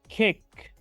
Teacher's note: no estoy emitiendo un sonido desde mis cuerdas vocales, al pronunciar la K, la última consonante de este verbo en su forma base. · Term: consonantes sordas